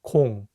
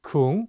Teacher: The vowel o sounds like a very round o like in the words oval and orange